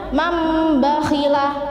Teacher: Jadi menukar nun mati dengan huruf mim. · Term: iqlab